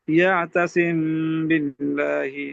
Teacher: اچھا آگے جی 2 نمبر پہ اخفا، یعنی جی میم ساکنہ کے بعد با آئے تو میم میں غنہ کرتے ہوئے ہونٹوں کی نرمی سے ادا کریں گے